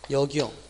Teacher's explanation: 이 경우는 소리상 니은이 첨가되지 않고 그냥 역이용이라고 해야 맞다